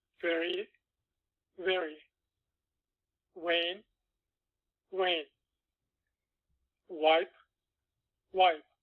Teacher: The Turkish V often sounds maybe halfway between the English V and the English W.